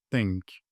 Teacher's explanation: Peltek bir T okunur. Peltek T'yi okumak için de dilini iki dişinin arasına koyarak T demen gerekir.